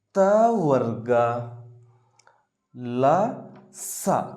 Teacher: ಈ ಅಕ್ಷರಗಳು ಹಲ್ಲುಗಳ ಸಹಾಯದಿಂದ ಉತ್ಪತ್ತಿ ಆಗ್ತಾ ಹೋಗುತ್ತೆ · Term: ದಂತ್ಯಾಕ್ಷರಗಳು